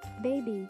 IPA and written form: ˈbeɪ.bi (Baby)